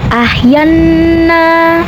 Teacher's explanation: Selanjutnya nunnya dihukumi dengan guna musyadadah. Karena nun bertasydid, maka cara bacanya adalah nunnya ini didengungkan. Jadi bunyinya n-nya ditahan seperti ahyanna.